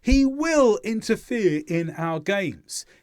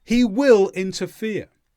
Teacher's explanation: you put extra stress on the word will to show that you are using it for annoyance, not for the future